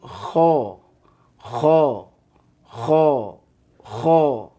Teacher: Kho ini termasuk huruf tebal, maka bunyinya kho. Bunyinya ke o. Bukan kha, tapi kho.